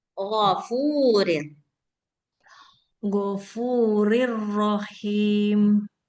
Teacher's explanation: Ghainnya nggak panjang, fu-nya yang panjang